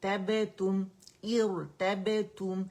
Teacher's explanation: اچھا تم نہیں بولیں گے، اسے تا دمتو ہے تو تم کی آواز آنی چاہیے، لیکن اسے ہم نے واو مدہ نہیں بنانا ہے